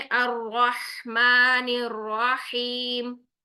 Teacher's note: तो हा साकिन में आपने सांस को जारी रखना है, आवाज को जारी रखना है